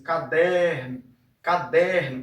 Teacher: Então o que estica mais é esse der aqui, tá? Der.